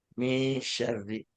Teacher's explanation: Jadi ngambang antara apa namanya nun dan ng yaitu min syarri. Kemudian ri-nya itu syarri, ada tasydid ro. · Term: ikhfa